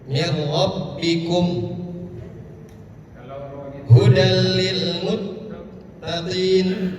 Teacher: Nun sukun bertemu dengan ro, idgham bila gunnah. Ya, nunnya nggak kebaca. Mir rabbikum hudal lil muttaqin, tidak ditahan.